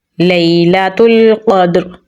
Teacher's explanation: قاف کو ہم پر یعنی موٹا پڑھیں گے اور دال کے ساتھ ملائیں گے، دال پہ ہم قلقلہ کریں گے، کمزور قلقلہ ہوگا۔ آیت لگانے کی صورت میں را کی زیر کو ہم ساکن کر دیں گے تو را پر یعنی موٹا پڑھا جائے گا